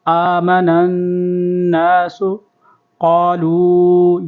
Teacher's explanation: نون کے اوپر تشدید ہے اور غنہ بھی کریں گے. آمن الناس قالوا، یہاں پر بھی مد کریں گے، کھینچیں گے.